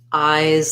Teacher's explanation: it's going to have the i diphthong and the z sound